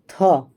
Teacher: स्पर्श अघोष महाप्राण दंत व्यंजन की ध्वनि